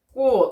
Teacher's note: 치읓도 7개 자음에 해당하지 않는 애가 오니까 여러분 7개 자음 중 가장 비슷한 발음인 디귿으로 바뀌어서 소리가 나고 있는 것이죠. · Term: 음절 끝소리 규칙